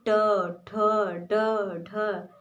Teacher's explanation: उसी प्रकार से जब आप ट वर्ग का उच्चारण करेंगे तो ट वर्ग का उच्चारण स्थान मूर्धा है, जैसे ट, ठ, ड, ढ।